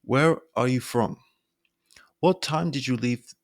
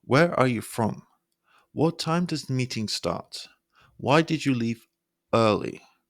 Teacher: a downward inflection adds weight to the question and making it sound natural and more serious rather than uncertain